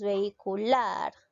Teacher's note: ¿Dónde lleva la mayor fuerza de voz? En la sílaba lar. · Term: palabra aguda